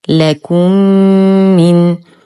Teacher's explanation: ميم ساكنة وبعدها أخرى متحركة في كلمتين، الحكم إدغام مثلين مع غنة أكمل ما تكون